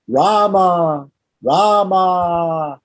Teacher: if i call out the name of rama i should be able to extend the vowel